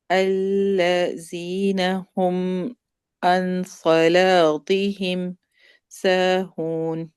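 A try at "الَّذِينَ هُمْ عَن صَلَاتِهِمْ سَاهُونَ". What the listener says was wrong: یہ ز ہے، یہ ز کی آواز نہیں آئے گی. زبان جو سمایا الیاء کے سامنے کنارے سے لگے گی.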